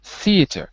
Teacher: So the th is voiceless in theater.